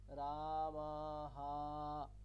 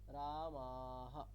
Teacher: তাহলে আকারের ক্ষেত্রেও কিন্তু তাই, আকারের ক্ষেত্রে আপনি রামা হা এরকম বলবেন না, কি বলবেন? হাটা ছোট করে, আকারটা ছোট করে একবারে